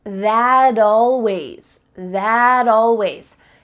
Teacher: This isn't always done, but it's often done when native speakers are talking quickly. We link together words by making the final T change into a D.